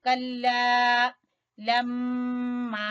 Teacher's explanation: میم مشدد کا غنہ کریں گے اور الف مدہ کو کھینچیں گے